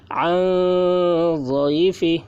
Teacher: نون ساکن کے بعد حروف اخفا میں سے ضاد آ رہا ہے، اس لیے نون کی آواز کو ناک میں چھپا کر پڑھیں گے، اس کو اخفا کہتے ہیں۔